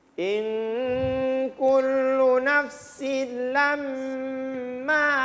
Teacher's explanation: Ma juga panjang, ada 2 ketukan.